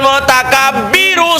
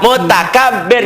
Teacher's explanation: Jadi kalau dibaca itu jadi tebal tapi kalau dihentikan jadi tipis Kenapa jadi sukun karena sebelum ro sukun ada baris di bawah